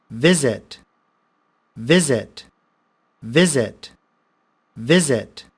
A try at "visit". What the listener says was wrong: Say visit it. There is no much stress on the I. There's more stress on the first I.